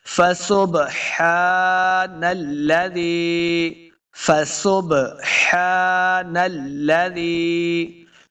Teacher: لام مشدد ہے، نلذی، زال کو نرمی کے ساتھ پڑھیں گے، یا کے ساتھ آگے ملنا ہے تو یہ یائی مدہ ہے، اس کو دو حرکات لمبا کریں گے